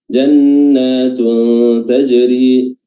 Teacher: nun tasdid, dipanjangkan durasinya